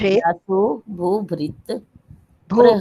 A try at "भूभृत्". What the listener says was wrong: भूभृत। यहाँ हलंत है ना, तो यहाँ हमें मुंह बंद करना पड़ेगा। भूभृत। भूभृत।